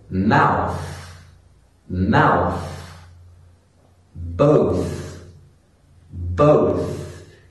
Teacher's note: Sometimes you will hear the unvoiced TH at the end of a word. · You put your tongue between your teeth, but you blow air out. There's no vibrating in my throat when I pronounce this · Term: unvoiced TH sound